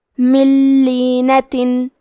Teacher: کلمت لینہ، لام حروف الادغام بغیر غنہ میں سے ہے، تو ہم نون ساکن کو لام میں ملا کے بغیر غنہ سے لیکن تشدید کے ساتھ یہ حکم کو ادا کریں گے۔